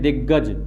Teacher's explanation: वो वर्ण कौन सा है यदि मैं बात करूं तो यहां पर आप देखोगे जो ग है, दो समान व्यंजनों का उच्चारण एक स्वर के साथ हो रहा है तो इसको आप क्या कहोगे, द्वित्व व्यंजन कहोगे।